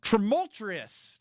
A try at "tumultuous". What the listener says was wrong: R. You're adding an R again.